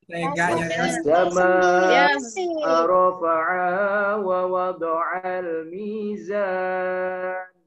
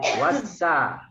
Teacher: alif lam syamsiyah berhadapan dengan sin tasydid wassa, oke. Meleburnya alif lam syamsiyah.